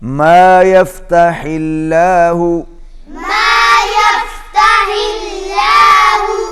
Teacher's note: اللہ کا لام باریک ہوگا اس لیے کہ پہلے زیر ہے